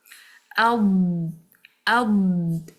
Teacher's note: there is a movement of the tongue from the back to the front. The sound will also be moving forward. So it's not a letter which has shidda. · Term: istitalah